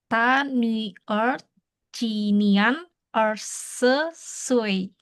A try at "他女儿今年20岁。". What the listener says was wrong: Oke, ini tadi ya Nien, bacanya Nien bukan Nian. Dia IAN jadinya IEN. IEN.